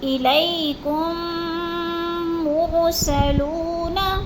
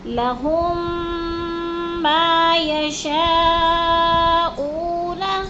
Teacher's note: اب میم ساکن کے بعد دوسری ساتھ ہی میم مشدد آ گئی ہے، تو اب ہم اس میم کو کیسے ادا کریں گے؟ تو یہاں میم ساکن کو میم مشدد کے ساتھ ملا کر سختی سے جماؤ کے ساتھ غنہ کے ساتھ پڑھیں گے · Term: ادغام شفوی